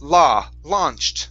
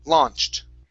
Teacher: the au will be an ah sound launched okay very good and yeah the other parts in here